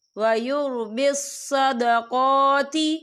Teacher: قاف کے پر کھڑی حرکات ہے تو ہم اسے 2 یا 3 حرکت کے برابر کھینچے پڑھیں گے